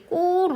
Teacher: 디귿으로 우선 바뀌고요. 이 디귿 뒤에 이어지는 기역이 지금 된소리 꼬로 나고 있죠